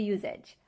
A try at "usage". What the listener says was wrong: The usage, the word is pronounced usage. We have to use the S sound. S, no voice. S, usage. Like star and sleep. Usage. Not usage. I cannot make a voice and say z, usage. There's no voice. There's no z sound like zebra.